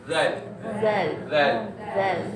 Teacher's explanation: cuma huruf zal mesti lidah tu keluar